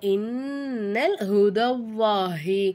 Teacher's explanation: நூனுக்கு மேல சத்து செய்யப்பட்டதுனால நூனை நல்லா அழுத்தி உச்சரிக்கணும்